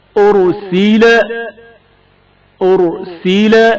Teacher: أرسل رائے ساکن سے پہلے پیش ہے جس کی وجہ سے را کو موٹا پڑھا جائے گا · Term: تفخیم